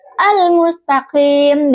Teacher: almustaqim dengan qof yang keluar dari tengah tenggorokan